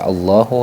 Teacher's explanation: nya pada kata Allahu ni terdapat fathah panjang kalau kita nyebutnya fathah panjang yaitu dibaca panjang satu Alif atau satu ayunan atau dua harakat